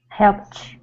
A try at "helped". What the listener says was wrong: Okay, give me an English T instead of a Portuguese T. We don't want to say helped with a CH. It's helped.